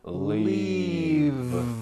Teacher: the word is leave with a voiced V keep the voicing going throughout the whole word and voice to